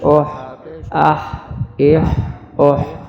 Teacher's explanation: ہا کی آواز حلق والی ہا ہے، باریک آواز ہے.